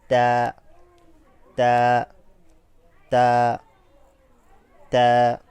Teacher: উপরের দাঁতের সাথে জিহ্বার অগ্রভাগ আলতো স্পর্শ করে উচ্চারিত হবে।